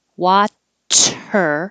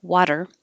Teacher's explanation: your tongue coming up and touching right behind your top teeth the same place as a t or a d but the difference is you're just barely touching it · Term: alveolar flap